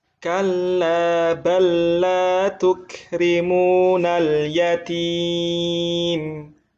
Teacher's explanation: Huruf pertama dimasukkan ke dalam huruf kedua, dibaca tanpa gunnah. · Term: idgham mutamatsilain